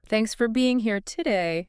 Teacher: Notice that the important words thanks, being, here, they retain their full vowel sounds. Right, because they carry the meaning. · the grammatical filler words for today, they get reduced to the schwa.